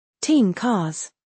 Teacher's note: The tongue moves to the back of the mouth early. It prepares for the k. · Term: ng sound